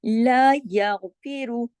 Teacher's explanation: را پہ چونکہ پیش ہے تو دمہ ہے تو را بھی یہاں موٹا پڑھا جائے گا کیونکہ را کنڈیشنل ہے، را صرف ان صورتوں میں موٹا ہوگا،